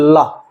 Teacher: हमारी वायु प्राण क्या है, जिह्वा के दोनों ओर से निकल रही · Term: पार्श्विक वर्ण